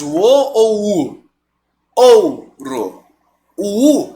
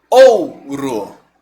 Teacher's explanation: o som sai de uma vogal ou seja um forte né e vem para um som mais fraco som de uma semivogal